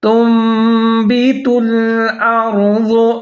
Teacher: یخرج لنا مما تنبت الارض، میم کے بعد میم پھر مشدد ہے تو یہاں پر ادغام کریں گے غنّے کے ساتھ، جیسے مما، آگے تنبت، یہاں پر جو ہے نون ساکن ہے، اس کے بعد حرف آ رہا ہے با، تو یہاں پر ہم اقلاب کریں گے۔ اقلاب مطلب نون ساکن یا تنوین کے بعد حرف با آ جائے تو وہاں پر نون ساکن کی آواز کو ہم میم کے ساتھ تبدیل کر دیں گے · ضاد کو موٹا کر کے پڑھنا ہے